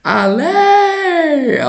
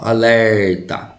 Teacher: Penúltima sílaba, ela é então uma paroxítona, né?